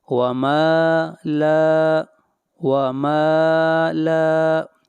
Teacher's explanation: میم کو بھی کھینچ کر پڑھیں گے اور لام کو بھی، یہاں پر الف مدہ ہے